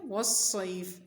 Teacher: واو پر منہ کو گول کر لیں گے، صاد کی آواز سیٹی والی اور موٹی ہوگی۔